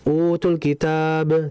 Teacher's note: Idhar alqamariyah maksudnya adalah al-nya dibaca jelas dan dialirkan karena lam mati itu lam memiliki sifat tawassud jadi dialirkan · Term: izhar al-qamariyah